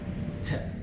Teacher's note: this T is produced when you strike the tip of your tongue to your tooth ridge, upper tooth ridge, as you release the air, and so it goes T, T. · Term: aspirated T